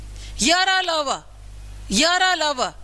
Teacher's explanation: हमारी जीभ आराम भी नहीं कर रही, हिल भी रही है, लेकिन कहीं पर वायु को रोक नहीं रही भाई। य, र, ल, व, य, र, ल, व, हमारी जीभ हिल रही है, ऐसी बात नहीं है कि बिल्कुल आराम है, बिल्कुल रेस्ट है, सवर की तरह है, लेकिन कहीं पर अच्छी तरह टच भी नहीं कर रही। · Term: अंतस्थ वर्ण